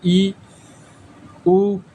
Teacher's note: जिन स्वरों के उच्चारण में मुख द्वार लगभग बंद रहता है उन्हें हम संवृत कहते हैं